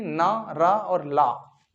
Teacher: ऐसे व्यंजन वर्ण जिनमें मसूड़ों को जिह्वा के द्वारा स्पर्श किया जाता है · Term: वर्ष व्यंजन